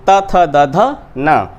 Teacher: इनका उच्चारण स्थान दंत है, इसलिए दंत व्यंजन भी कहा जाता है।